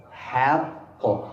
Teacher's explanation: القاف مفخمة لكن الحاء مرققة ولا تتأثر.